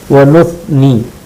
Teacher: ثا ہے جو زبان کی نوک اور اوپر کے دانتوں کے کنارے سے نکلتا ہے